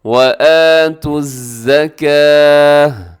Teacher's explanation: وَآتُوا الزَّكَاةَ، اب یہاں پر کیا ہے کہ گول تا پر وقف ہو رہا ہے، رموز اوقاف میں سے یہاں تو چھوٹا سا لکھا ہوا ہے تو آپ نے یہاں وقف کرتے ہوئے تا کو ہا سے بدل دینا ہے